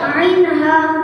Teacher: 2 নম্বর মাখরাজ কণ্ঠনালীর মাঝখান হইতে উচ্চারিত হয়